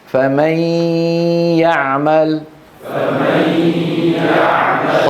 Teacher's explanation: ينقطع عمل الخيشوم وانطق ياء صافيه